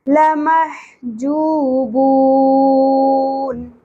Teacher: یومئذ وسط حلق سے، جو حرف مدہ ایک الف کے برابر، بو حرف مدہ اور اینڈ پہ نون ساکن کی وجہ سے مد عارض وقفی